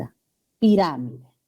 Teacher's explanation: según las reglas generales no se tiran esdrújula o pro paroxismo el acento recae en la ante penúltima sílaba